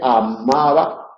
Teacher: en la M los labios se pliegan, se cierran totalmente, amaba, para que el aire pueda salir por la nariz, y sin embargo el va no se cierra totalmente.